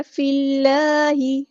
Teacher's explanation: فی اللہ، فا کو ہم نے لام کے ساتھ ملا دینا، ہم بس ہمارا ڈراپ ہو جائے گا. لام جو یہاں پہ باریک پڑیں گے، اللہ کا لام باریک پڑیں گے. فی اللہ نہیں پڑھنا، فی اللہ.